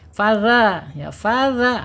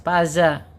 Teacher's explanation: Ujung lidahnya menyentuh ee ujung gigi seri ya. Dza keluarkan sedikit ujungnya ya. · Ujung lidah menyentuh ujung gigi seri dikeluarkan sedikit ya. Tapi jangan terlalu panjang, jangan terlalu meledza dikit aja ujung.